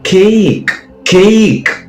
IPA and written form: keɪk (cake)